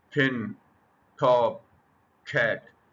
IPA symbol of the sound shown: ʰ